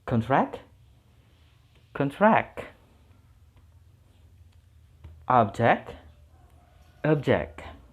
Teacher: Jadi kalau itu sebagai noun, stressingnya di suku kata yang awal. Kalau itu function sebagai verb, stressingnya pindah ke suku kata yang akhir.